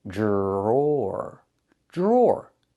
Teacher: The DR makes a J sound like in juice and jump. Plus the R, jr.